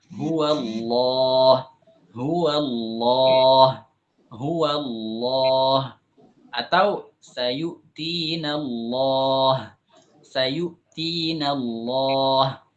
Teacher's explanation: lam itu ketika diucapkan pada saat tebal, lam itu posisi tenggorokan itu menyempit, kemudian tengah-tengah lidah itu melengkung.